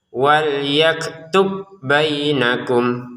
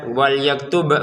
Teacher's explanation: huruf ' ba' tidak lagi diulang karena telah menyatu dengan huruf 'ba' berikutnya